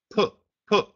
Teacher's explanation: And so P is a plosive. Puh, that's your lips too.